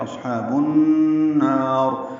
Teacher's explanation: اصحاب النار حمزہ کو صاد سے ملانا ہے، صاد پر پڑھنا ہے، اس پہ ہمس ہوگا، ہا وسط حلق سے ادا کرنا ہے، 2 حرکات لمبا کرنا ہے. با کو نون مشدد سے ملا دیں گے، ادغام شمسی ہو رہا ہے، الف لام نہیں پڑھا جا رہا، غنہ ہوگا یہاں پہ. اصحاب النار نون کو لمبا کریں گے اور وقفاً را پر پڑھیں گے.